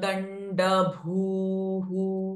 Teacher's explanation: भू अगेन महाप्राण दीर्घ sound with विसर्गा at the end of the sentence